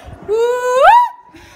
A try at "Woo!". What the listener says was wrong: Like, try not louder, but higher. Look. Woo!